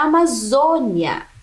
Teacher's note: uma palavra paroxítona que é aquela que tem a penúltima sílaba mais forte